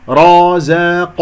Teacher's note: الراء والقاف مفخمة، الراء مفخمة لأنها مفتوحة، والقاف مفخمة مرتبة ثانية من أحد حروف الاستعلاء